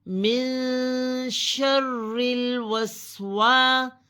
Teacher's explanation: شرل، شرل، واو زبر سین وس، وا زبر سین وس، واو کی زبر سین کی جزم سے ملے گی، وس، پھر الف مد ہے، الف سے پہلے واو کے اوپر زبر ہے، اس کو الف مد کہتے ہیں، اسے ایک الف کے برابر کھینچا جائے گا